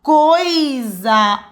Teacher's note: Olha como é que o O é mais forte que o I. Ditongo decrescente. Então, essa é a resposta.